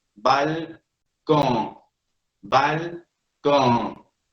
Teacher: Hay una N al final que no se pronuncia plenamente. El que no pueda pronunciarse plenamente, la N hace que la O cargue con ella. Por eso la O se ve nasalizada.